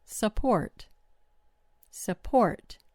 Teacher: The vowel in the first syllable turns into a schwah because that syllable doesn't get the stress.